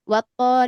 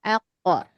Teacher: huruf qof ini dibaca dengan qolqalah mantul